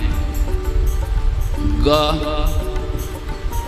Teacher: तो जीभ के मूल भाग को कंठ में हम लगाते हैं, तो वो ग वर्ण उच्चारण कर पाते हैं।